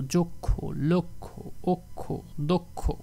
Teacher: এই স্বরে অ এর পরে খ থাকার কারণে সেটার উচ্চারণ হয়ে গেছে ও এর মতো